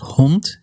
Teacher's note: When you find a voiced consonant at the end of a word, you're going to devoice it. So the D at the end of hond is going to turn into a T sound